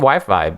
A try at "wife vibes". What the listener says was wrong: You said wife vibes, and it sounded like you said Wi-Fi's.